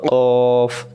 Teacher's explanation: তাহলে মনে রাখবেন কব অক্ষরটা জিহ্বার গোড়া থেকে মোটা, মানে মুখটা গোল করে